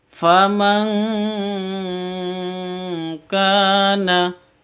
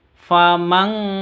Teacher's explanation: nun sukun bertemu dengan Kaf samar disertai dengung samarnya ditambah ng famang seperti itu dengungnya seperti itu jadi ng mati ke ng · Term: ikhfa Hakiki